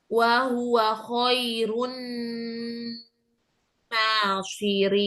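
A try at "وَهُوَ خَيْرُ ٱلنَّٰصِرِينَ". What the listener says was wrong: Nasirin. Shotnya tebalkan lagi. Wa huwa khairun nasirin.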